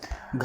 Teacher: तो घा की आवाज़ हमारी कंठ से निकलती है